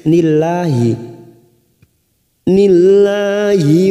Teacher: lam jalalah yang didahului kasroh, kita baca tarkik